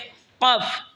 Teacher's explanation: কফ জিহ্বার গড়া তার বরাবর উপরে তালের সঙ্গে লাগে উচ্চারণ হবে কফ